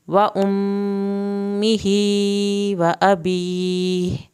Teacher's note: یہاں پر میم کی شد پہ ایک الف کے برابر دیر لگائیں گے ، کھڑی زیر کی وجہ سے یہ لمبا کھینچا گیا ہے،